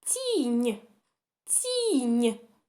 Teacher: у нас ть і нь вони дві м'які значить це слово в нас з м'якими приголосними звуками тому слово